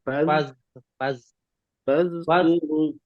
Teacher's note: Tahan fazkuru lidahnya ditahan supaya faz tidak mantul.